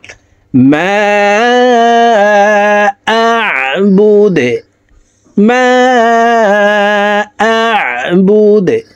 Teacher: দাল কলকলার হরফ নিচের দিকে ধাবিত করে ধাক্কা দিয়ে উচ্চারণ করব